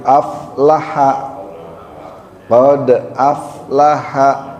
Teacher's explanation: Yang mantul huruf dalnya aja. Huruf fa bukan huruf qalqalah. Jadi tidak mantul